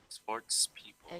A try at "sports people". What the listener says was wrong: Okay, don't forget the S in the middle.